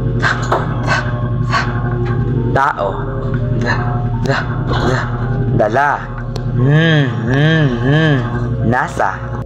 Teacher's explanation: Ito ay mga tunog na nalilikha kapag ang dulo ng dila ay dumidikit sa loob ng mga ngipin sa itaas. Sa ganitong paraan, nakakaroon ng saglit na pagharang sa daloy ng hangin bago ito palabasin, kaya't nabubuo ang mga tunog na ta, ta, ta, ta, at halimbawa ng pangipin, ta, ta, ta, tao, da, da, da, dala, nasa.